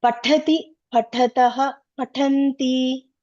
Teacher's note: this is called Mahaprana letters that has some more air in that. So some air should come.